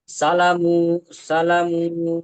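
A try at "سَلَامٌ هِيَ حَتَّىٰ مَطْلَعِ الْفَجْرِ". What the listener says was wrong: সালা টান হবে, খারাজ জবর আলি মাদ্দার মতো এক আলিফ টান হবে। সালামুন। হিয়া সালামুন হিয়া হাত্তা মাতলাইল ফাজর।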